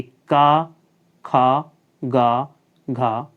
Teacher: कंठ वर्ण भी कहा जाता है अर्थात इनका उच्चारण कंठों से होता है